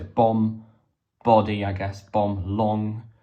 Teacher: Now, I've got to point out this lovely sort of assonance, which is when the internal vowels used in the words rhyme